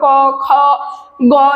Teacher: সেগুলো কিন্তু দীর্ঘভাবে উচ্চারণ করতে পারবো না যেমন ক খ গ এগুলো কিন্তু থেমে যাচ্ছে আমরা কিন্তু অনেকক্ষণ উচ্চারণ করতে পারছি না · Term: রুদ্ধদল